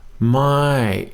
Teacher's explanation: My is a falling tone. Goes up and it comes down.